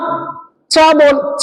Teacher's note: तो मैं बता देता हूं, हमारे जो ऊपर वाले दांत हैं उनका जो जड़ है, मूल भाग है ना, चा बोलिए। चा बोलने में जहां जिह्वा टच कर रही है, हमारी जिह्वा जीभ जहां टच कर रही है उस स्थान को बोलते हैं तालु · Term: तालव्य वर्ण